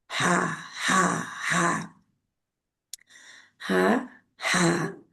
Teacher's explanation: आपका गला है उसके दरमियानी हिस्से से रगड़ती हुई आवाज निकलेगी, जरा खराश सी